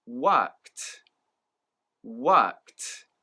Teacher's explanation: And the KED at the end of this word doesn't actually make a D sound, but rather it makes a T sound